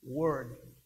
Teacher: o r do inglês ele é um R retroflexo ele faz aquela curva lá na língua é como se fosse o r do paulista aquela pessoa lá